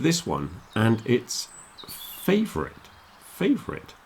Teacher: the stress is on the beginning fave now some people might do it as three syllables but